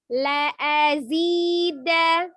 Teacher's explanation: ada la pendek, a pendek, zi baru panjang ya, 2 harokat, kemudian danya pendek kembali.